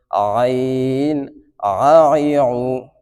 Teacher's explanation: এখানে আমি পড়েছি আউ, কেউ যদি পড়ে আউ তাহলে কিন্তু ভুল হবে, কারণ এখানে হরফটি কি হামজার পর আইন। আইনের মাখরাজ কণ্ঠনালীর মধ্যবর্তী স্থান থেকে উচ্চারণ হবে। এবং আরেকটা বিষয় খেয়াল রাখবেন, উচ্চারণের সময় যেই রয়েছে সুর সম্বন্ধীয় জিহ্বা, যেখান থেকে সুরটা বাইর হয়, এই সুর সম্বন্ধীয় জিহ্বাটা কণ্ঠনালীর পিছনের অংশের সাথে মিলিত হবে আইনের ক্ষেত্রে।